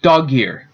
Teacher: And between the two, an interval vocaic, between the syllables, there will actually be kind of a jump between the last consonant and the beginning of the next, making it sound like a double, double consonant instead of a space. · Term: linking